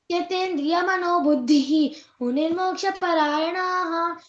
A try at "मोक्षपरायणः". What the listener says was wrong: ఇక్కడ పరాయణః, యానాహ లేదు, పరాయణః అంతే, దీర్ఘం లేదు అక్కడ.